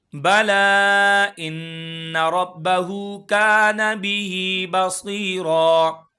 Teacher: لا کو کھینچ کے پڑھیں گے 2 سے 3 الف کے برابر کیونکہ مد منفصل ہے